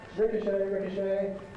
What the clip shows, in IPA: ˈrɪkəʃeɪ